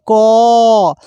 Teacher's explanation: ক এর সঙ্গে অ লুকানো রয়েছে। অর্থাৎ অ ছাড়া ক উচ্চারণ করা যায় না।